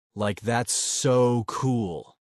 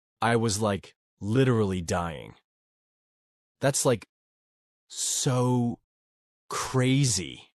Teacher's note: That's the California Valley Girl accent. It's full of high-pitched tones, extra like words, and exaggerated emotions.